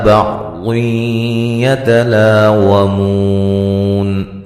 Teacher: یہاں نون تنوین کا ادغام مع الغنہ ہوگا